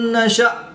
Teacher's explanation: حمزہ ساکن ہے تو اس کو جھٹکا دے کر پڑھیں گے